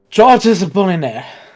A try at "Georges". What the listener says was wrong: You don't say the S in George. It's just George.